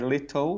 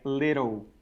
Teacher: So little is when I'm using the tongue up the top there to say little. That's the light L. · So it's just the lips closing in a little bit like a little W sound.